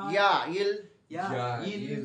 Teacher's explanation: জিহ্বার মধ্যভাগ তালুতে লাগিয়ে তালুতে লাগিয়ে উচ্চারিত হয়